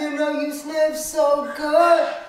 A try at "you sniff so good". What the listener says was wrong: Do it again, but do it from your stomach. So not from your throat. Yeah, so you breathe in, and it's like, listen to the difference. And I'm like, you sniff so good, right? You see the strain?